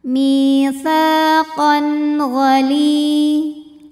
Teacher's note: tanwin fathah yang menghadapi huruf halqi atau huruf tenggorokan yaitu gain maka tanwin kita bunyikan dengan jelas jadi kalau tanwin bunyinya n sama kayak bunyi nun sukun ya maka ini tetap n saja dan tidak ditahan mitsaqon gali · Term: izhar halqi